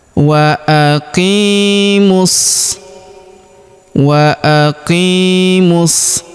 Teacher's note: Kita tahan dan tekan ya pada huruf shanya karena berharakat tasydid ya.